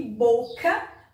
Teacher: se você pronunciar a palavra, você vai perceber que boca, o bo tem mais força. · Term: sílaba tônica